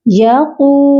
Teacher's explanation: قاف کو ہم کھینچ کر پڑھیں گے کیونکہ اس کے ساتھ واو مدہ آ گیا ہے. یقو، ایک الف کی مقدار کھینچیں گے.